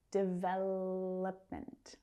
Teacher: That third syllable reduces down to the schwa. We don't hear oh.